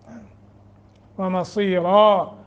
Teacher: रा को मोटा करेंगे और तनवीन को ख़त्म कर देंगे। चूँकि वक्फ की वजह से यहाँ हम रुक रहे हैं तो अलिफ पे रुकेंगे।